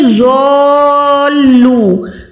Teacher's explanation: ज़ॉ को आपने कम से कम 4 सेकंड लंबा करें